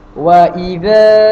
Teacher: Alif mad asli, yang di mana tuan-tuan dan puan-puan ketika membaca wa idza harus memanjangkan huruf zal sebanyak 2 harakat